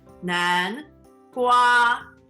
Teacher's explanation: pumpkin is 南 瓜 Second tone, first tone